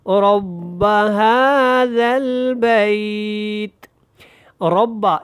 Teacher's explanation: یہاں پہ را کو پر پڑھیں اور ہا کے اوپر کھڑی زبر ہے تو اس کو آپ نے لمبا کرنا ہے